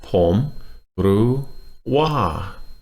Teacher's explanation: So we have rising, high tone, and falling.